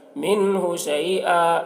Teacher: نون میں یہاں پر اظہار کریں گے کیونکہ نون ساکن کے بعد ہا ہے حروف حلقے میں سے، تو نون کو ظاہر کر کے جلد پڑھیں گے۔